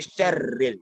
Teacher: Jadi dia bukan ditahan min syarril bukan, tapi disamarkan antara nun dengan shin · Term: ikhfa